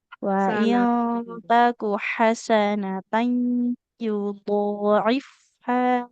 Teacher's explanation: huruf H-nya di tengah tenggorokan